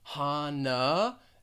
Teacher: at the beginning you are going to pronounce this h and the second syllable has that schwa that uh sound